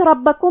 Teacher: کلمت ربکم میں را پہ زبر ہے تو ہم حرف را کو موٹی آواز میں پڑھیں گے۔ با پہ تشدید ہے تو ہمیں 2 حرف کے برابر با کو پڑھنا ہے، اور کیونکہ تشدید زبر کا ہے تو ہم زبر کو ظاہر کریں گے۔